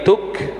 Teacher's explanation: Tuk jangan mantul, bukan tuke tapi tuk